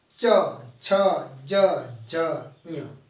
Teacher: च तो जीवा तालु से टच कर रही है